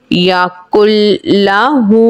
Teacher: نون ساکن کے بعد حرف یرملون میں سے لام آئے گا تو ادغام ہوگا اور ادغام بغیر گننے کے ہوگا